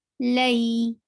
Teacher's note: 2 counts long, because this is harf leen, and harf leen is also 2 counts long.